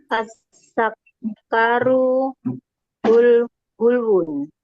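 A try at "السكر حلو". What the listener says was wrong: Baik, bi dhammi sin. Bi dhammi as-sin. Huruf sinnya didhammahkan. Nah, sinnya didhammahkan. Kalau dhamma itu sa atau su? Su. Nah, as-sukaru.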